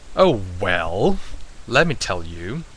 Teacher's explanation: it is a dipping tone. It goes down and it goes up. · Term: third tone